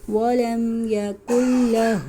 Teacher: نون ساکن کر دیں گے، کاف کو لام سے ملائیں گے